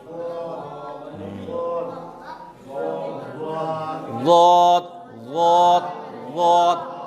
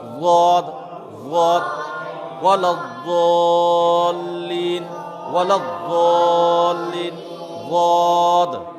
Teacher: जुबान की करवट को ऊपर के दाढ़ों से मिलाकर ज़ाद ज़ाद अदा होता है